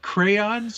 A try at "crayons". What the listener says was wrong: it sounds like you're saying cranes. Crayons. Crayons.